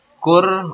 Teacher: ro mati sebelumnya domah disebutnya wajib tafkhim ya. Jadi kalau ada ro mati sebelumnya domah atau ro berharakat fathah atau domah itu disebutnya wajib tafkhim.